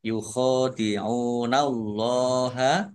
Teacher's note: Yukhadi'unallaha kha fathah berdiri mat tabi'i ain domah wawu sukun juga mat tabi'i dibaca panjang dua harokat. Allahnya dibaca tebal karena harokat di depannya fathah.